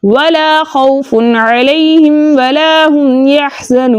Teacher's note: वाव मद्दा को दो हरकत की मिकदार खींचकर पढ़ते हैं, लेकिन आगे नून का सुकून आरिज़ी वक्फ की सूरत में आ रहा है, इसलिए यहाँ पे मद बनेगी मद्दे आरिज़ वक्फी, जिसकी मिकदार 2-4 6 हरकत है, लेकिन 6 हरकत की मिकदार खींचकर पढ़ना ज्यादा बेहतर है